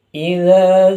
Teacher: Pada lafaz idza itu dinamakan bacaan mad thobi'i. Karena alif sukun didahului harakat fathah yang mana panjangnya dua harakat.